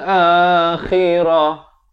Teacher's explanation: Khirah, makhrajnya di hujung kerongkong. Khirah dan ta marbutah, ta simpul ini bila diwaqafkan, ditukarkan kepada bunyi ha dan jangan dipanjangkan.